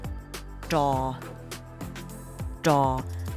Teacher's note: the throat R is also tricky you would say da da the tip of your tongue rolls up to the roof of your mouth and then you produce almost like a D sound